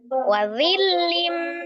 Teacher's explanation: Idgham dilebur atau ditasdid, bi dengan ghunnah dengung, berarti ditasdidkan dengan didengungkan. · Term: idgham bi ghunnah